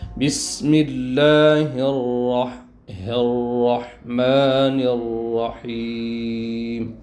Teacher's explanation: پورا را شروع سے آخر تک موٹا